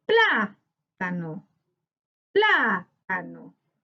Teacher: en plá encontramos la sílaba tónica, por tanto, corresponde a una palabra esdrújula y le colocamos tilde porque las palabras esdrújulas, como dice la regla, siempre se tildan.